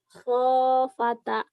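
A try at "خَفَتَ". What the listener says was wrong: Khafata. Tadi salah khofata. Salah. Panjang pendeknya nggak pas.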